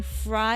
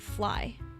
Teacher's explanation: they can't really tell the difference between like r and l because we don't have both we only have one